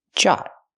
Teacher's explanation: Use the open ah sound like hot and stop. Jot. Make a stop T.